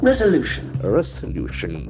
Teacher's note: The accent falls on the third syllable